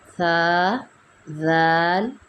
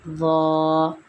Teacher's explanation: ان کی ادائیگی میں فرق جو ہے وہ مرقق اور مفخم کے اعتبار سے ہے، یعنی باریک اور موٹے کے اعتبار سے ہے۔ ذال اور ثا کو ہم باریک پڑھتے ہیں، ضا کو پر یا موٹا پڑھیں گے۔